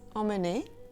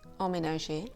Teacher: emme at the start of a word will be sounded like the nasal en